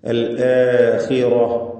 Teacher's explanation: ഇതിൽ ഖ്വാഇന് കുറഞ്ഞ തഫ്ഹീം കൊടുക്കണം. അതിന് കസ്ര ഉള്ളതുകൊണ്ട്, മക്സൂറത്ത് ആയതുകൊണ്ട്.